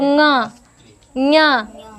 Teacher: ञ नाक से निकल रहा है · अनुनासिक व्यंजन। क्योंकि जब भी हम उनका उच्चारण करते हैं तो उनका जो स्वर निकलता है हमारा, वो नाक से निकलता है